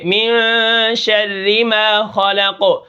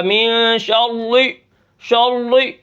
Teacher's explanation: را کے نیچے زیر ہے تو را کو ہم باریک پڑھیں گے